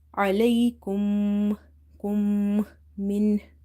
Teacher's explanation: after meme sakin, if you see another meme, you have to do the gunna in the meme sakin sound. This is called idgham for meme sakina.